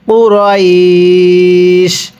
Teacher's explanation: এখানে ওয়াকফের কারণে 3 আলিফ টান দিব। কুরাইশ, কারণ ওয়াকফের সময় মদের হরফের পরের হরফে ওয়াকফ হলে 3 আলিফ টানতে হয়।